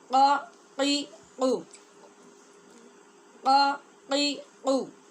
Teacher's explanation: دو نقطوں والا قاف جو موٹا قاف کہلاتا ہے اور حلق کے اندر ٹکرا کی آواز نکلتی ہے